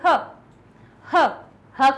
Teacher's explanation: ह ह ह कहां से निकला कंठ से